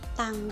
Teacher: bunyi t seperti pada kata tang yang diproduksi dengan ujung lidah yang menyentuh langit-langit mulut